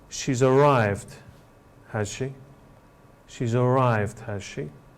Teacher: the person making the statement or the comment question as it's called is not too happy about the fact that this person has arrived and they express this by using a falling tone